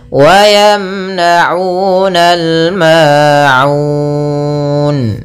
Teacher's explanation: Kemudian pada lafal ma'un ada bacaan mad tabi'i, yaitu fathah bertemu alif, ma'un. Pada lafal un ada bacaan mad arid lis sukun. Ini boleh kita panjangkan 2 harakat, boleh 4 harakat dan boleh pula 6 harakat.